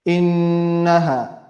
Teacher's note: Noon has a shadda, so we'll be having ghunna for 2 harakat long. Innaha. Whenever noon or mim have shadda, we have ghunna on them.